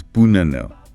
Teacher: The first A and the third A are unstressed, and they both reduce to center.